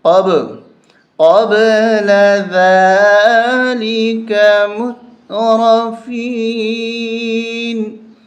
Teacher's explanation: قلقلہ کا مطلب ہوتا ہے جیسے گیند دیوار پہ لگتی ہے تو ایک آواز سی نکلتی ہے، تو یہاں پر قب قب با کی آواز جھٹکے کے ساتھ نکلے گی